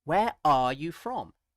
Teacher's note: you could put the stress on are.